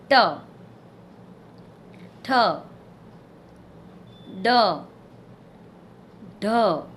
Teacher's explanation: જીભનું ટેરવું વાંકું વળીને તમારા પેડા સાથે અડીને આ વ્યંજન બોલાય છે. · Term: મૂર્ધન્ય વ્યંજન